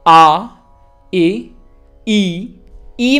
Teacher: ई ई में आप देख रहे हैं थोड़ा सा हमने होंठों को स्ट्रेच किया है , ई और ई फर्क है, दो ई हैं, ई ई